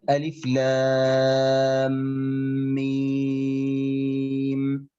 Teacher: إدغام متماثلين أو إدغام شفوي. لماذا؟ لأن الميم تخرج من الشفتين. · اللام يعني لو كتبناها اللام ثم ألف ثم ميم، إذن تنتهي بحرف ميم، هذا حرف الميم يكون ساكنا، ثم بعده حرف ميم أخرى، ميم وميم، فيصبح تماثل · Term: إدغام متماثلين صغير